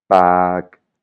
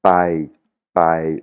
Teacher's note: c'est vraiment un son P qui explose un petit peu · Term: le son popla